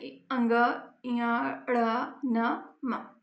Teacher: जिनके उच्चारण में हवा का प्रमुख अंश नाक से निकलता है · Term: नासिक व्यंजन